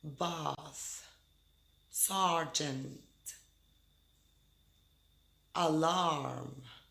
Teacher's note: the AA vowel sound like in bars sergeant alarm the tongue is low